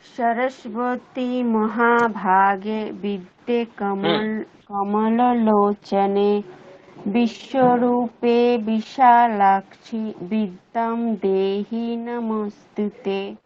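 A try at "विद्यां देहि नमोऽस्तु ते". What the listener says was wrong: বিদ্যাম দেহি নমস্তুতে। গুড।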